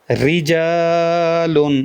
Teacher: یہ بھی باریک پڑھا جائے گا کیونکہ را کے نیچے زیر ہے